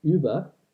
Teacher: The rounded U sound that we see, we still have this sound in modern day French and German. It's the sound in German words like über, and this becomes a unrounded sound E.